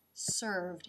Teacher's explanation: The lip comes up to make the V in served.